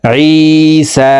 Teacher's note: ই এখানে একালিফ টান, জেরের বাম পাশে জাজমালা ইয়া মদার হরফ, ডান দিকের হরকতকে একালিফ টানিয়া পড়িতে হয়। তো জেরওয়ালা আইনটি জাজমালা ইয়ার সাথে একালিফ টানে পড়ব। সিনের উপরে খারা জবর আছে, তো সিন হরফকে উপরের দিকে ধাবিত করা একালিফ টানে পড়ব।